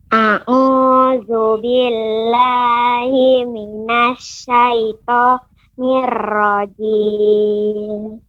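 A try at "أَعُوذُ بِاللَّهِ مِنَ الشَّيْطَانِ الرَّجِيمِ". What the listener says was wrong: Ya, pengucapan ro ya tidak terlalu banyak ya, getaran ro-nya. Nirrajim, yang benar nirrajim. Nirrajim.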